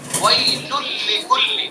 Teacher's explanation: تو جب ہم نے تنوین کا لام میں ادغام کیا تو تنوین کی آواز بالکل ختم ہو گئی